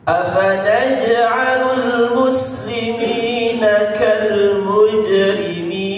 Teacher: huruf jim sukunnya afanaj dipantulkan sedikit Pak ya, karena dia qalqalah sughra.